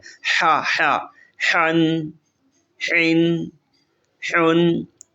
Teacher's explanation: یہ وسط حلق سے نکلتا ہے، آواز میں لطافت ہونی چاہیے